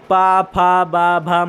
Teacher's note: ये पूरे ओठ की मदद से बोले जा रहे हैं।